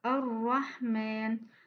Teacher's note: C'est la vibration de l'extrémité de la langue lors de la prononciation de la lettre ra. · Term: at-takrir